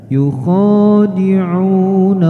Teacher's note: Huruf kha dibaca panjang 2 harokat, kemudian u juga sama.